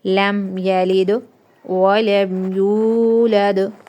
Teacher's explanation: پیش ہے، تو واو مدہ ایک الف کے برابر کھینچ کے پڑھنا ہے۔ دال ساکن ہے تو دال پہ کیا ہوگا؟ قلقلہ، اوکے، ہلا کے پڑھنا ہے۔